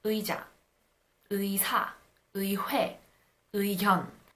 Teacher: You pronounce the ư and the e in one shot. This pronunciation of 의 holds when it is the first syllable of a word. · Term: diphthong